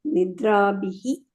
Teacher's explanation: ನಿದ್ರಾಭಿಹಿ ಒಂದು ಅಲ್ಲೇ ಇದಿದೆ, ವಿಸರ್ಗ ಇದೆ, ನಿದ್ರಾಭಿಹಿ ಅಂತ ಹೇಳಿ